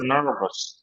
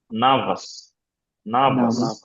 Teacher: American রটা উচ্চারণ করবে ব্রিটিশরা করবে না